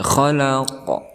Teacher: Ada pantulan daripada huruf qalqalah itu